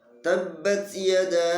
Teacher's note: ada bacaan panjang yang lebih dari 1 alif. Artinya panjangnya harus 2,5 alif. Karena di sana terdapat hukum yang namanya mat jais munfasil.